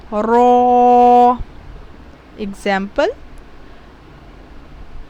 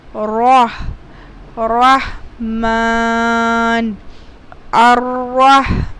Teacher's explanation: Ra is always reads as bold. Ra is always recited thickly and the mouth turns round whenever it is recited.